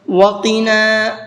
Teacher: قاف کو پر کر کے پڑھیں گے